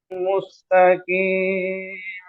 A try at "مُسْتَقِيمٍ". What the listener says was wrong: সিন পড়ার সময় ঠোঁট গোল থেকে যায়, গোল থেকে গেলে সিন যখন আপনি ধরেন, কিন্তু এখানে মিম দম্মার কারণে ঠোঁট গোল হয়েছে, সিনে ঠোঁট গোল থাকে, মুস বলবেন না, মুস, মুস,